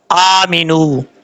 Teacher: حمزہ کے اوپر کھڑا زبر ہے، ایک الف کی مقدار لمبا کر کے پڑھیں گے، میم زیر می، نون واو پیش نو، آمینو، نون کے بعد جو واو ہے یہ واو مدہ ہے، اس کو بھی ایک الف کی مقدار لمبا کر کے پڑھا جائے گا۔